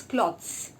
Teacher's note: The ZZZ sound at the end should be very much audible to your ears. It shouldn't be clothes, it should be cloths.